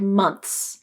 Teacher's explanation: it is perfectly okay to drop the th when the word month is plural like months